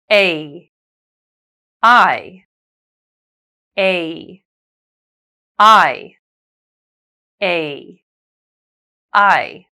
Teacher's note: You glide from the first to the second without stopping. The first sound should be stronger and longer, accounting for 3/4 of the sound. The second sound is weaker, but it must be pronounced fully, 1/4 of the sound. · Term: diphthongs